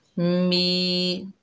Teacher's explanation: मीम को या से मिलाएंगे और ये या मद्दा है, एक अलिफ की मिकदार खींचकर पढ़ेंगे। मी मिलाएंगे।